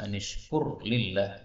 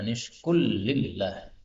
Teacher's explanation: ini ra ketemu lam, ini boleh idgham menjadi anishkul lillah